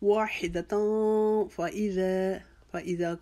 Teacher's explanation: تا کے اوپر 2 زبر کی تنوین، اس کے بعد فار ہے 1 الف کی جتنا اخفا کریں گے